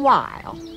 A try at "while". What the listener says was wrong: Why are you pronouncing we H like that? that's Weird.